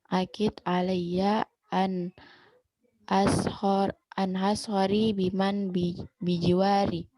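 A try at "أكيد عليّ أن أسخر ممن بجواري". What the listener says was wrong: Bukan ashari, ashara, fathah. Min, pasangannya min. Miman bijiwa.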